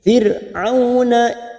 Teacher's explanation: ra sukun yang didahului kasroh kita baca tipis